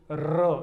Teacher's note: हमारी जिह्वा जिसका उच्चारण करते हुए कांपती है वो कंपनजात है ना, लुढ़कती है।